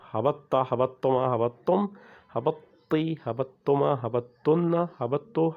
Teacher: So the ta is written but not pronounced when there is a shadda because of the idgham.